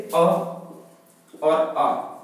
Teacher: अर्ध विवृत आएंगे जिनम बहुत ज्यादा मुंह नहीं खुलता